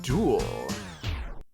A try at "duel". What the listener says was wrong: No, you pronounced it with a ooh-ah sound instead of an ooh sound.